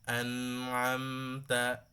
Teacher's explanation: নুন মিমের আওয়াজটা হচ্ছে গুন্নার আওয়াজ, নাকে থাকে। এই জন্য এখানে মিডিয়াম গুন্না ধরে রেখে একালে পরিপূর্ণ না করে ওর থেকে অর্ধেক করে কি করতে হবে, আনআমতা সেম পরিমাণ হবে, যে নুনে বেশি দেবো মিমে কম দেবো না, দুইটাই সেম পরিমাণ গুন্না থাকে, হ্যাঁ, খেয়াল করতে হবে।